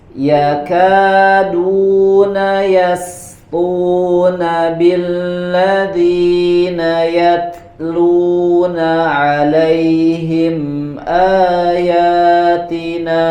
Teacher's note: pada kata yasquna perhatikan tipis sinnya Kemudian di huruf to-nya dibaca dengan tebal.